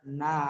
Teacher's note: Ihdina. Na, kemudian ada mat tabi'i dibaca panjang na, dua harokat